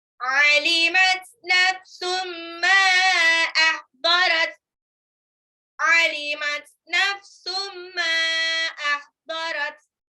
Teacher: Nafsum tanwin ketemu mim idgham bi gunah ya. Tanwinnya lebur ke mim ditahan 2 sampai 3 harokat.